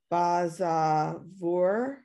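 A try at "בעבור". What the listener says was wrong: No, it's ba'avor. It's not the Zion. It's the Ayin. You read it as both.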